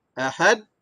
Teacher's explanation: Gegaran yang berlaku pada huruf dal. Kerana kuat tekanan suara. Kita lepaskan balik. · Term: qalqalah